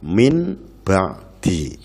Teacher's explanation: Yang ketiga adalah iqlab, artinya mengganti. Maksudnya mengganti suara nun mati menjadi suara mim mati, seperti dalam lafal min ba'di.